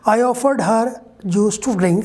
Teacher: If you speak only the last part of the sentence, I offered her juice to drink, there's a falling tone, a falling intonation.